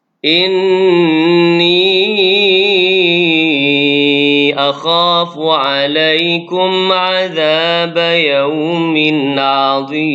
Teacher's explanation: Kemudian mim mati bertemu dengan ain pada kalimah alaikum azab. Mim mati bertemu dengan ain izhar syafawi. Bacaan dia jelas pada mim mati.